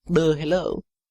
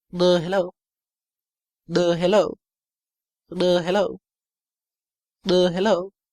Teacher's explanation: most of the time when he says that, his voice goes creaky right at the end